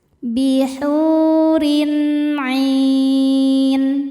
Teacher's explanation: Selanjutnya ada hukum izhar halqi. Karena ada tanwin kasrah menghadapi huruf halqi yaitu ain. Maka tanwin dibaca jelas.